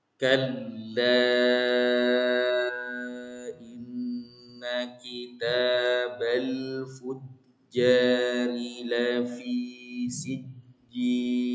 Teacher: Kalla ini panjang Pak ya, ketemu dengan alif ya atau hamzah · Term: jais munfasil